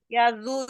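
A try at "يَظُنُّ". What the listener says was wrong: yaubu. Bukan yazu, yaubu. Bukan yazu. Itu pangkal lidahnya harus naik, Bu. Pangkal lidahnya wajib naik.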